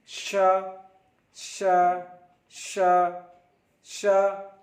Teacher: श is pronounced from the middle of the tongue and the middle of the पैलेट। श श श श जबान के बीच और तालु के बीच से उच्चारण होता है।